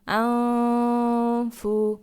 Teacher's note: তো এই যে নুনের উপর সাকিন আছে এটা হলো নুন সাকিন নুন সাকিনা ইকফা ইকফার ফা আসছে তো এখানে গুন্না করে পড়তে হবে